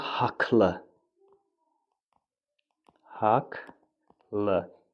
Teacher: Bir dənə istisna bu sözdür ki, q-dan sonra cingiltili samit gəlsə də q k kimi tələffüz olunur. Qalan bütün məqamlarda kar samit gələcəksə k, cingiltili samit gələcəksə q kimi olacaq.